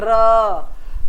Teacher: हमारी जीभ की जो नोक है वह मसूड़े के पास जाकर कंपित होती है · हमारी जो जीभ की नोक होती है बिल्कुल आगे की वह मसूड़े के पास भीतर से जो हमारी अंदर से हवा है उसके कारण दो तीन बार हमारी वह कंपित होती है यानी उसमें कंपन होता है और यह मात्र एक होता है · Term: प्रक पित व्यंजन, प्रकंपित